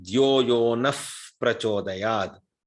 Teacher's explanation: because the nakara followed by visarga followed by pakara. There is a rule in Sanskritam to say dhyoyo naf prachodayad. One F sound will come in between.